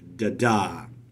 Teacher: And that, as we talked about last time, is unstressed, stressed. So da-da, where the second syllable is stressed, the first syllable is unstressed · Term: iambic foot